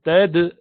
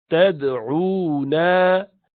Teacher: dal sakina is qalqala, so you say tad, like rebounding it.